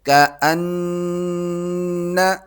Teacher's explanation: نون پر تشدید ہے تو اس پر غنہ ہوگا، ناک میں آواز پیدا کی جائے گی